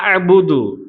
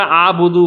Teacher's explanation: ஹம்ஸாவ ஐன்ல சுக்குூன் வச்சு நம்ம நிறுத்தனும்